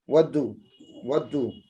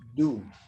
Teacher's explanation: So the first one is weak and second one is stressed. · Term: weak form